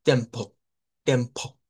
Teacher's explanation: nos va a sonar como una E del español y menos como una E abierta